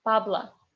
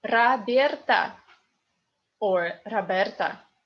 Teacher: because O unstressed becomes A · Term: Russian phonetic law